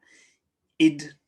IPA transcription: ɪd